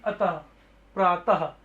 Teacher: यह जो विसर्ग है यह ह वाली आपकी साउंड है